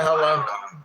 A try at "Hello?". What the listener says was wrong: you might not be saying it correctly. It's more of a quick and sharper.